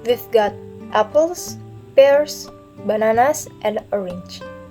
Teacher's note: my voice using rising in the first and falling pattern at the last